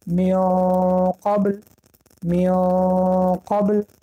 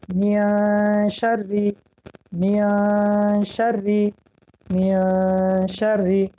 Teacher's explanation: و اگر بعد از حرف نون، بعد از حرف اخفا حرف نون حرفای استعلا آید، یعنی حرفایی که غفظ خوانده می شود، در وقتی تلفظ اخفا ما باید زبان را به مخرج قاف نزدیک بکنیم و همین سبب اخفای ما در اینجا غفظتر می براید